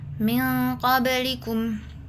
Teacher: bunyi nun disamarkan tapi tetap ada dengung sekitar dua harakat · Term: ikhfa hakiki